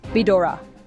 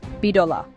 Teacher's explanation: The R softens into L.